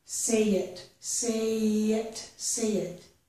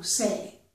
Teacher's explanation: We only hear the y if we join those two words closely together.